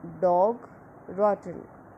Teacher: short low back rounded vowel